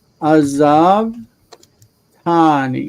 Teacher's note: we're going to have the first syllable reduced